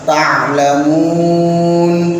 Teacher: Jadi pakai ain, jangan pakai hamzah.